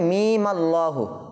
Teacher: Number 1 ওয়াসল, অর্থাৎ মিলিয়ে পড়া যাবে। যখন আমরা এই দুইটা শব্দকে একত্রে মিলিয়ে পড়ব তখন ওই মিমে থামবো না